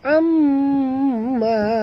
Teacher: Jadi am tu dengung dua harakat, ma panjang dua harakat · Amma mim bertasydid, wajib dengung, wajib al-gunah. · mim bertasydid, wajib dengung, wajib al-gunah. Amma, jadi am tu dengung 2 harakat, ma panjang 2 harakat, sama panjang ya.